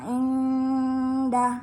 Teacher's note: Ketika dibaca huruf nunnya disamarkan